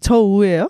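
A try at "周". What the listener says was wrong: 저우인데 우를 그렇게 세게 발음할 필요가 없다는 거지.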